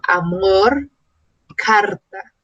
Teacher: al final de una palabra o de una sílaba que termina en R, también tiene una sonoridad fuerte, un sonido vibrante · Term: R fuerte